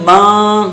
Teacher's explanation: زبان کو ہم اس نون کے مخرج پر لگا نہیں رہے ہیں